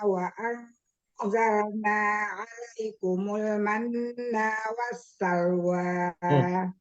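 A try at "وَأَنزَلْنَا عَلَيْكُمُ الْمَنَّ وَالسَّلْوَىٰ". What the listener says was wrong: Nanya pendek, manna wassalwa.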